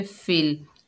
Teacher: फ़ा के नीचे ज़ेर है, आगे लाम साकिन है, फ़ा को लाम से मिलाकर पढ़ेंगे